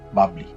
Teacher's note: এখানে মধ্য ব এর সাথে অ এর উচ্চারণ হবে না তাই এর উচ্চারণ হবে বাবলি এবং ব এর সাথে অসন্ত হবে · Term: হসন্ত